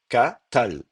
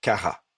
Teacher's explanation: le aleph n'est plus prononcé, il y a un amuissement, il est devenu quiescent, et donc à ce moment-là, on va rester en syllabe ouverte et on va mettre kara.